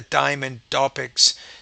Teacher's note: you're not pronouncing the T with enough aspiration